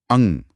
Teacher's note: इसका उच्चारण केवल नाक से होता है। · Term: अनुस्वार